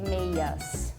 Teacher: Portuguese, we just say meias. So no consonant there. No D.